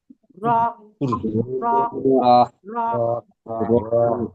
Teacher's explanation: পারছেন নুন >> তারপরে দেখেন র র জিহবার কিনারা ও >> উল্টা পিঠ এবং সামনে উপরে দাঁতের সাথে লাগিয়ে উচ্চারিত হয় র এই জীব জিবটা উল্টো করেন ওর গোড়াটা উপরের দাতের সাথে লাগিয়ে